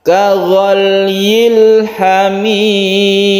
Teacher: Lamnya jangan dikolkolah. Kaghalyil, tapi tidak kolkolah lamnya itu, kita sukun lam.